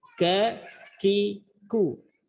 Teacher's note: Kalau baca ki, hamsnya sifat hamsnya itu hilang. Ada apa namanya, hembusan udara yang keluar sedikit.